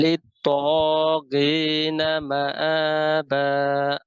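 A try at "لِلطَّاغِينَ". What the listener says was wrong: এই ত কিন্তু মোটা হবে, ত হ্যাভি হরফ। লিত ত লিত তাগিনা। গি গি গি গলা শেষ থেকে গি। লিত আগ আগ, এই যে আগ গি। জি লিত তাগিনা।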